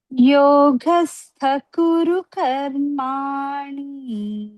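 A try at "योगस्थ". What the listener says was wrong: ఇంకొంచెం మహాప్రాణ పెట్టినమ్మా. యోగస్థ.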